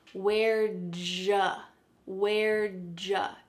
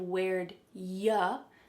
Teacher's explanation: Sometimes we say where'd ja, where'd ja, instead of where'd ya.